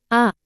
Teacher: विवृत स्वर अर्थ मुख बहुत अधिक खुला होता है।